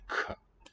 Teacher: I think the C is going to be really strongly aspirated sound in Welsh.